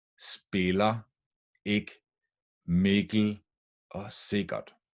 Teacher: all four words are spelled with an i but they're pronounced one step down with an e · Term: short vowels